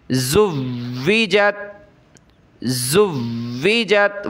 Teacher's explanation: واو پر میں سختی کر رہا ہوں، رک رہا ہوں۔ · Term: مشدد حروف